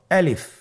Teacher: আলিফ হরফটি মাখরাজ হলো আপনার মুখের শূন্যস্থান থেকে। গলা এবং মুখের শূন্যস্থান হতে আলিফ হরফটি উচ্চারিত হয়